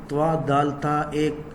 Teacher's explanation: اس کا تو، دال، تا ان تینوں کا ایک ہی مخرج ہے. زبان کی نوک جب ثنایا علیا یعنی اوپر سامنے والے جو 2 بڑے دانت ہیں ان کی جڑوں سے لگے تو یہاں سے تو، دال، تا ادا ہوتے ہیں